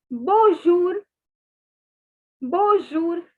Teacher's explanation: the n is not to be pronounced it is a nasal sound